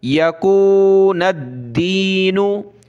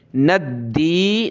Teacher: दाल को हमने सख्त करना है तशदीद की वजह से।